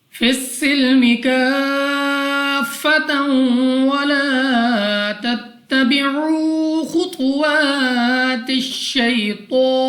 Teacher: یا ساکن سے پہلے زبر یا لین, بغیر کھینچے بغیر جھٹکا دیے پڑھیں گے یعنی جلدی سے